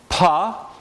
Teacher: a minus continuant sound is, for instance, pa, there's a complete closure at the lips